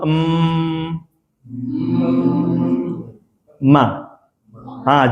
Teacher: huruf mim itu keluar dari bibir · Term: syafawi